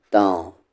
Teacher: نون ساکن کی آواز کو چھپا کر پڑھیں گے، تن نہیں تاں.